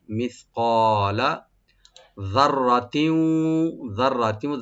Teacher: রাটাকে double করে deep করে পড়বো।